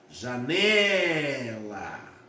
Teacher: A sílaba tônica é o né, que é onde eu demorei mais